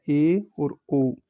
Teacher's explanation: अर्ध संवृत में थोड़ा सा मुंह ज्यादा खुलता है और इसमें ए और ओ सम्मिलित होते हैं